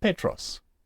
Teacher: You will see the accent is on the epsilon, and we accent it, we stress that syllable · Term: acute accent